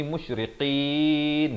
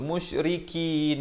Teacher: Qaf saya dah beritahu tadi, di pangkal lidah, jangan tertukar dengan kaf, kerana kaf makhrajnya di depan sedikit. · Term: huruf qaf